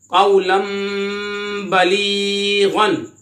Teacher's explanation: इकलाब हो रहा है 2 ज़बर की तनवीन के बाद बा हरफे इकलाब में से आ रहा है तो यहाँ पे इख्फा करें यानी गुन्ना करके पढ़े।